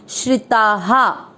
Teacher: श्री, श्री का अर्थ होता है श आधा र पूरा, र पे ई की मात्रा लगे, श्री, श्रिता। ता में आ की मात्रा है, इसलिए विसर्ग को पढ़ रहे हैं हा